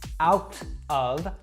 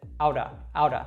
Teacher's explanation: That T sound in the middle actually warps to kind of a D sound. Now, this is very similar to the R sound in Latin languages like Spanish and Portuguese.